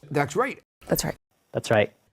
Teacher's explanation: T at the end of a word is often formed by the tongue tip, but you don't hear any t release at all.